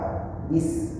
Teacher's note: makhraj sin antara lidah dengan gigi bawah, bis, dan mulut kita tersenyum. Saat mulut kita tertutup, sinnya pun gak sempurna, bis, sinnya gak dapat.